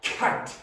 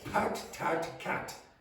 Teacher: you want to be very, very clear with the aspiration on those at the beginning of words.